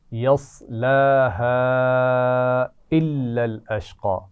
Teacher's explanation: لا يصلاها إلا الأشقى لا يصلاها إلا الأشقى لا यस्लाहा, साद का ख्याल रखना है, जज़्म है लेकिन उस पर जब मिलाएंगे तो आवाज़ को मोटा करेंगे। तो यस्लाहा इस पर छोटी मद भी है तो थोड़ा सा खींच कर पढ़ेंगे। यस्लाहा इल्लल अश्क़ा।